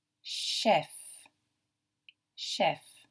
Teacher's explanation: This CH has a different sound. It's got a sh sound. It almost sounds like SH for shop.